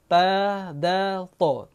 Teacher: Ta, dal, to. Tempatnya hujung lidah pergi ke gigi kacip atas.